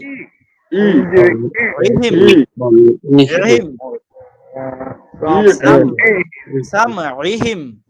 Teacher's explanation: ইহিম হামজা জের ই বলা যাবে না, আইন জের ই বলতে হবে।